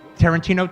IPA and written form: ˌtærənˈtiːnoʊ (Tarantino)